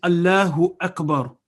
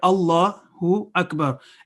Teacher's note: So Allah is a thick letter, Lam is thick letter